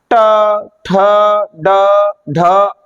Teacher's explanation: तो यह जो जीव हमारी ऊपर वाले हिस्से से टकराए गी उसे हम बोलते हैं मूर्धा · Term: मूर्धन्य